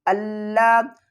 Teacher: لام کے اوپر سختی کرنی ہے تشدید کی وجہ سے